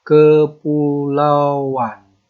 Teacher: Kepulauan. Nah, ada penambahan bunyi w. Nah, itu namanya penambahan fonem.